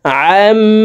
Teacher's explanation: আইনকে হালকের মধ্যখান থেকে উচ্চারণ করব